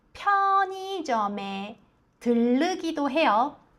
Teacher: 편의점の真ん中の의はいと発音します。